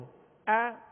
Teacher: ا حمزہ جو ابتدائے حلق سے ادا ہوگا